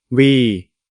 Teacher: Cette syllabe commence par la consonne W et se termine par la voyelle longue I, ce qui donne oui.